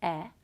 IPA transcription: ɛ